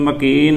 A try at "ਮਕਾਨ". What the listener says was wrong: ਇਹ ਮਕਾਨ ਥੋੜਾ ਨਾਸਕੀ ਉਚਾਰਨ ਕਰਨ ਜੀ।